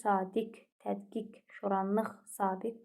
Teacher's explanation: vurğusu son hecəyə düşür